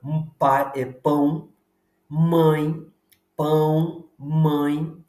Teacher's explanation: você não pronuncia pela boca você pronuncia pela pela pelas fossas nasais pelas narinas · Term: ditongo nasal